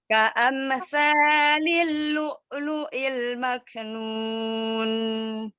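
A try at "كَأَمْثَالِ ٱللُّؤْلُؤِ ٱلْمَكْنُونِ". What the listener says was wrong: Sanya tidak terlalu panjang ya, tidak kepanjangan, 2 harokat saja ya. Ka'amsalil ya. Karena kan mim sukunnya tidak dipantulkan, tidak ka'am. Ka'amsalil lu'lu'il maknun. Ini izhar. Jelas. Jadi sempurnakan mim sukunnya itu dengan merapatkan 2 bibir ya. Jadi jangan pas mengucapkan ya, supaya tidak memantul. Dari bibir, dari lidah. Supaya tidak mantul. Ka'amsalil tanya itu ujung lidahnya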